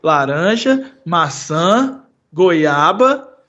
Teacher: a gente usa Upspeak quando a gente tem uma lista de coisas e a gente mostra para o nosso interlocutor que a frase ainda não acabou